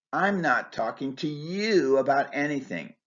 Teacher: I'm stressing the pronoun you to show that I'll talk to anyone but you.